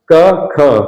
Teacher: तो जिनके उच्चारण में कंठ में कंपन नहीं होता है, ठीक है ना, जिनके उच्चारण में कंठ में कंपन नहीं होता उनको क्या कहा जाता है, अघोष व्यंजन